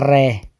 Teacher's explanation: लुंठित रे, जिसमें कंपन होती है रे, लुंठित या कंपित व्यंजन वो है रे।